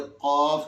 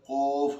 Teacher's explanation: جس طرح قاف ادا کرتے وقت ہونٹ بالکل منہ سیدھا رہتا ہے، ہونٹ بھی سیدھے رہتے ہیں، اس کی ادائیگی میں اگر ہم ہونٹ گول کر لیں گے تو یہ قاف کے بجائے قوف ہو جائے گا، اور یہ غلطی ہے.